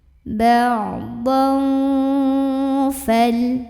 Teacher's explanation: Kemudian ada ikhfa ausat, karena ada tanwin fathah yang ketemu sama huruf fa, maka tanwin fathahnya ini dibunyikan samar-samar, mau bilang fa sambil ada dengungannya.